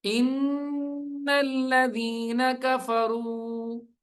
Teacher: ان پہ غنہ کریں گے, نون کو لام سے ملائیں گے, نون لام زبر نل.